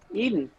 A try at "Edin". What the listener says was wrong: Edin. Are you're going to pronounce it Eden so you can get it to rhyme with Sweden, but I think it's actually Edin.